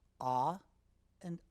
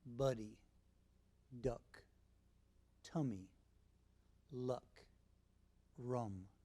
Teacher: If you watch carefully, you'll notice that both sounds are made with the tongue in the center of the mouth, ah, ah, The difference is that ah is said with a wide open mouth, not, and is made with a medium open mouth, nut. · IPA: /a/ vs. /ʌ/